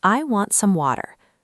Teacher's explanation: When a T falls between two vowels, the sound changes completely. Instead of that puff of air, your tongue lightly taps the roof of your mouth. It sounds like a very soft D. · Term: flap T